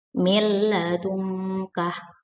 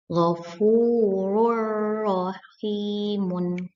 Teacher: Idgham bila gunnah ialah nun sukun atau tanwin bertemu dengan salah satu huruf lam atau ro. Cara bacanya ditekan sebentar atau dimasukkan, tidak dengung. Contohnya, nun sukun bertemu lam, milladungkah.